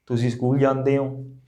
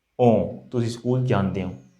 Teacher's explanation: this is not the O sound completely, it's a nasal O sound